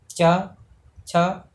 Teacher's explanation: च, छ, ये कहाँ से आपका तालु से निकल रहा है, इसलिए ये तालव्य होगा।